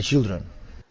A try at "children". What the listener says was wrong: he needs to push harder with his tongue for that CH it sounds like an sh instead